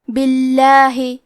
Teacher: یہاں لفظ الجلالہ سے پہلے با کے نیچے زیر ہے تو لفظ الجلالہ کے لام کا حکم ہے ترقیق تو ہم حرف اللام کو پتلی آواز میں پڑھیں گے